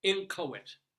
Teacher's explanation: if you see the phonetic spelling, it's in K-O, and then the schwa T, with the accent on the ko